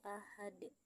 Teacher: qalqalah kubro karena huruf dal berada di akhir ayat dan dibaca sukun akibat waqaf atau berhenti. Cara membacanya harus dipantulkan dengan kuat atau tebal.